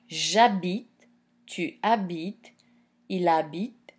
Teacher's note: the H in habiter is a mute H, so it acts as a vowel. So what that means is that the E in je is going to fall